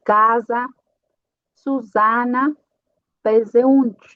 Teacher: Para uma S entre vocais, vai ser um zumbido a pronúncia.